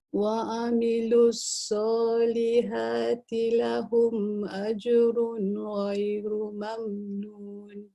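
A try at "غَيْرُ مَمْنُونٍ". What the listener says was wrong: Tak dengar mamnun dia. Cuba ghairu, tak dengar akhir dia. Ghairu. Lahum, ambil lahum. Mamnun.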